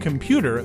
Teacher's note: For example, in the word computer, the stress is on the second syllable, computer.